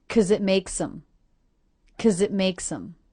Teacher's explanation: I reduced the word because to simply 'cause. The K, schwa, Z sound.